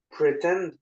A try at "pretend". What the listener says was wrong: c'est pas en comme je Teai dit tout à l'heure c'est un i tu le prononces comme un i le E